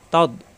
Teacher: জিব্বার গোড়ার কিনারা উপরের মারি দাঁতের গোড়ায় লাগবে